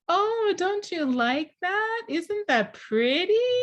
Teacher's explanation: we raise our intonation we have more intonation variation like making it song like a song